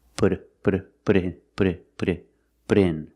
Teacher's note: the T in put sounds like a fast D